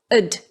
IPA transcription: əd